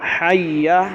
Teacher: ٹھیک ہے جی، سور لگانے کے چکر میں الفاظ کو بگاڑ دو اور بڑی غلطی آ جائے تو کیا فائدہ؟ حی، اور یا کو کھینچنا ہے ہی نہیں، کیونکہ اس پر زبر ہے، مد بھی نہیں ہے، کھڑا زبر بھی نہیں، الف بھی نہیں ہے۔